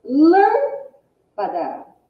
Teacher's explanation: A sílaba de maior intensidade é o lã. A sílaba mais forte é o lã. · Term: proparoxítona